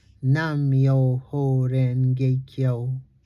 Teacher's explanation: Each syllable gets one equal stress or beat.